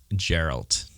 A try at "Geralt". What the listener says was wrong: Gerald. Not Gerald with a D. Gerald with a T. Gerald. Geralt of Rivia.